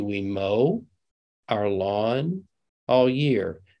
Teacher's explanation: it's a very nice smooth utterance with breaks between we mow and our lawn and all year